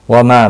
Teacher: मा अलिफ मद्दा है, एक अलिफ के बराबर खींच कर पढ़ेंगे।